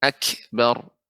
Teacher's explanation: jangan sampai seperti huruf qalqalah. Akan tapi benar-benar dia huruf kaf yang ada sifatnya adalah hamas